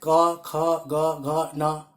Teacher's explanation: और ये सभी 25 वर्णों का उच्चारण जो है स्पर्श व्यंजन के अंतर्गत आते हैं, क्योंकि इस सारे व्यंजनों का उच्चारण जो है का स्थान जो है, जैसे कवर्ग का जो है कंठ के स्थान से उच्चारण होता है